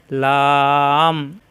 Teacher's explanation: লাম জিহ্বার আগার কিনারা উপরের মাড়ির দাঁতের ঘোড়ার সঙ্গে লাগাইয়া লাম জিহ্বার আগা উপরের দাঁতের গোড়ায় লাগিয়ে